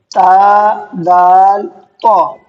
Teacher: زبان کی نوک ثنایا علیہ کی جڑ سے مل کر ادا ہوتے ہیں۔ اب میں اس کو آپ کو بتا دوں، زبان کی نوک، زبان کی نوک تو آپ سمجھ گئے ہوں گے، جب ہم زبان باہر نکالیں گے اور سامنے کی نوک جو ہماری زبان کی ہے اس کو نوک کہتے ہیں۔